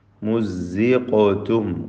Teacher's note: ഖാഫിന് ഖൽഖല സുഗ്റ നൽകി തഫ്ഖീമോടുകൂടി ഖാഫിനെ ഉച്ചരിക്കണം.